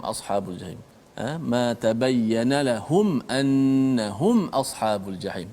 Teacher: Izhar syafawi, kita kena jelaskan mati mim tu tanpa boleh kita memanjangkan gunnah kat situ